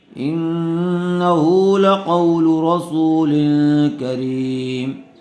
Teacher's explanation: تنوین کے بعد حروف اخفاء میں سے کاف آیا ہوا ہے، اس لیے غنّے کے ساتھ اخفاء کر کے پڑھیں گے